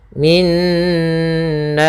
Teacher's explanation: atau Nun bertasdid di sini kita namakan dengan bacaan gunah yaitu cara membacanya adalah suara nunnya ditahan dulu min baru masukkan kepada nanya min dua harakat nnya baru kena